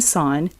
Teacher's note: In sign, the S represents an unvoiced S, the I is a long I, and the G is inaudible.